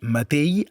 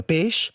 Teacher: El català septentrional té un tret fonètic encara vigent, emmudeix la X final. És per això que encara podem sentir matell en lloc de mateix, o pell en lloc de peix, i calai en lloc de calaix.